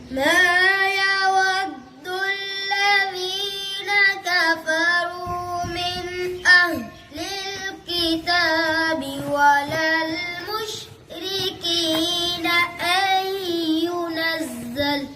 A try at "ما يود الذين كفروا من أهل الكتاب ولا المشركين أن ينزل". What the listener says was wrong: आपने गुन्ना पूरा नहीं किया तो रिपीट करते हैं।